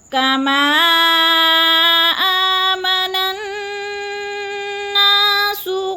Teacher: کما کو تھوڑا سا لمبا کرنا ہے، مد متصل ہے، 4 الف کے برابر اس کو کھینچنا ہے